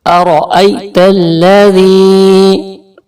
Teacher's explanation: نیلے کلر پہ آپ نے تھوڑا سا کھینچ کے پڑھنا ہے، یہ حرف مدہ کی نشانی ہے، یعنی کہ یا ساکن سے پہلے دیکھیے زیر ہے، تو یا ساکن سے پہلے زیر ہو تو وہ یا مدہ ہوتا ہے اور اس کو ایک الف کے برابر تھوڑا سا یعنی کہ کھینچ کے پڑھا جاتا ہے